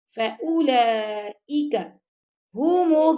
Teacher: اگر آپ لپس گول کرتے ہیں نا، حدود اللہ حدود اللہ فأولئک هم الظالمون، فأولئک فأولئک نہیں پڑھنا آپ نے، آپ کی لپس گول ہوں، او کو لمبا بھی نہیں کرنا